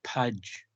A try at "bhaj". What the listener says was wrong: budge. Budge. B-A. Not pudge. Budge. B-H.